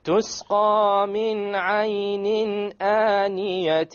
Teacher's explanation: We dropped the noon sound, we emerged it without a ghunna. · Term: idgham without ghunna